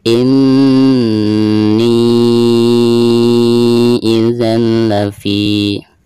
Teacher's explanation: Di sini ada mad tabi'iyah ya, lalu berhadapan dengan huruf hamzah namun di lain kata atau di lain kalimat ya, antara ini dan idza ya. Maka dihukumi mad jaiz munfasil dan dibacanya bisa 4 atau 5 harokat